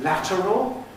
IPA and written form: ˈlætərəl (lateral)